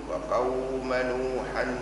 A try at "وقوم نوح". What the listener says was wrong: نوح مش نوحا